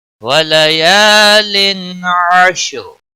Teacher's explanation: تنوین کے بعد حروف حلقی کا عین آیا ہے، اس لیے یہاں پر اظہار ہوگا، اس اظہار کو اظہار حلقی کہتے ہیں۔